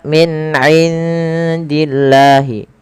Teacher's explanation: di sini suara nunnya disamarkan ke huruf dal karena ia ada bacaan ada bacaan ikhfa, yang mana ikhfa itu cara membaca antara izhar dan idgham.